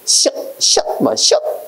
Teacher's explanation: 입 안을 좁게 해서 공기의 흐름을 빠르게 해서 내는 소리. 아무래도 입안을 좁게 하니까 공기가 나올 때 마찰이 많이 되겠지. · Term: 마찰음